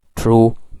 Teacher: I may have a stop like true, because T is the sound which start from an alveolar